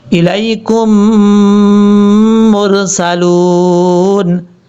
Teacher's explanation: جب کاف کو میم سے ملائیں گے تو اس وقت غنہ بھی کیا جائے گا 1 الف کی مقدار